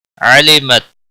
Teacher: علمت تا ساکن کو ہلانا نہیں